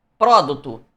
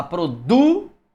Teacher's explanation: Não, você fala produto. Sílaba mais forte é o du. Paroxítona.